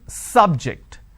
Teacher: biology is an interesting subject i'm stressing on the first syllable